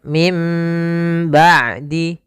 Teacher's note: ada nun sukun bertemu dengan ba maka ini kita namakan dengan iqlab iqlab yaitu membalikkan suara Nun menjadi suara mim